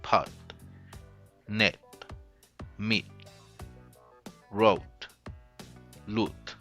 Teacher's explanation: if you notice the T sound it's almost almost silent